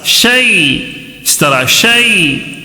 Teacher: یا ساکن سے پہلے زبر ہو تو یا لین، جلدی پڑھنا ہے نرمی کے ساتھ.